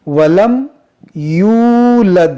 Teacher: आपको इसे थोड़ा खींचना होगा क्योंकि मौन 'waw' से पहले एक 'dammah' है, जो 'Waw Maddah' है। लेकिन लोग जो करते हैं वह है 'yulad' wa lam 'yulad', जिसका अर्थ है कि वे इसे खींचते नहीं हैं, वे इस 'waw' को छोड़ देते हैं।